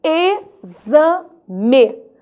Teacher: Mas a palavra exame, ela também é grafada com X, meu aluno. Só que o som desse X já mudou. Agora o som é de Z.